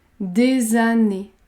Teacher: La liaison est toujours obligatoire après des.